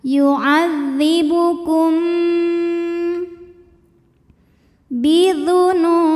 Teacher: Karena mim sukun menghadapi ba, maka mim dibaca berdengung. M tahan. Yuadzibukum bidzunu nu mad thobi'i zohiri. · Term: ikhfa syafawi